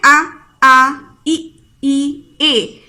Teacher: जिन स्वरों के उच्चारण में होठ गोल ना खुलकर किसी अन्य प्रकार में खुले उन्हें अगोली कहते हैं। यानी कि जिन स्वरों के उच्चारण में हम लोगों का जो होठों का शेप है वो गोल ना हो करके किसी अन्य आकृति में हो, ठीक है, तो वो हमारी क्या कहलाते हैं, अगोली कहलाते हैं।